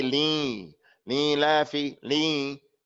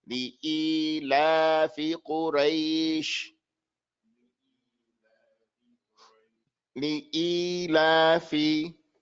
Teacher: This is a ya elongation after the hamza.